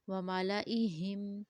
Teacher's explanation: ہا کا جو ساؤنڈ ہے وہ چسٹ کے قریب سے آئے گا